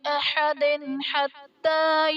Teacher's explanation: احد حتیٰ میں دال کے نیچے دو زیر کی تنوین، تنوین کے بعد حروف حلقی میں سے آ رہا ہے تو یہاں پر اظہار کا قاعدہ ہوگا، یعنی تنوین میں ہم غنہ نہیں کریں گے